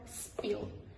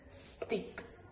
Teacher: the English sounds p, t, k are pronounced without aspiration. For example, pill, but spill, tick, stick, kin, skin. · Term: non-aspirated